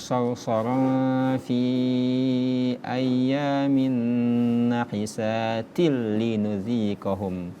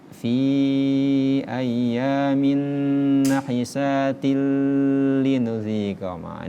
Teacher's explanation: Tadi pada ayat ke-16 itu kita temui ghunna sarsara fi ayyamin nahisatil linudziqahum kasrotain ataupun fathatain, dummatain, kasrotain ketemu dengan lam yang bertasydid, maka itu dibaca ghunna, idgham bila ghunna, memasukkan tanpa dengung